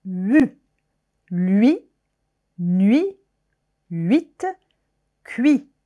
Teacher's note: C'est un u aussi très rapide.